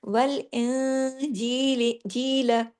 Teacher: नून साकिन के बाद जीम आया, तो यहाँ मैंने छोटा गुन्ना, बड़े से कम, सेकंड लेवल का, ये कामिला गुन्ना कहलाता है। · इख्फा में आवाज थोड़ी नाक के अंदर जाती है, थोड़ी बाहर रहती है